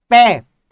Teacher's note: आपको ऐसा लग रहा है दोनों ओष्ठ जो है आपके मिल रहे हो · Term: ओष्ठ वर्ग